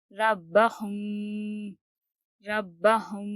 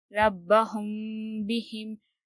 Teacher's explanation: میم ساکن کے بعد اگر با آئے تو ہمیں گنہ اور اخفا کے ساتھ پڑھنا ہے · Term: اخفاء شفوی